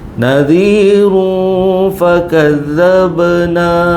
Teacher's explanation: Nadiru fakazzabna. Nadiru ikhfa hakiki dengung dua harakat.